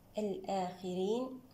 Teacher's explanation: بمقدار حركتان الآخرين الهمزة مع الخاء هنا تباعد كبير حكمه الإظهار الخاء هنا مكسورة نفخمها من الدرجة الخامسة تفخيما نسبيا الخاء مع الراء تباعد كبير حكمه الإظهار الراء هنا مرققة لأنها